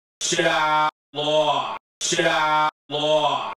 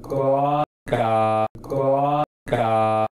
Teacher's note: Mayor Daley's THOUGHT vowel is not the one in the standard descriptions of the Northern Cities shift: it's rounded, diphthongal and not that low